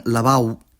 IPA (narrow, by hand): laˈβao̯β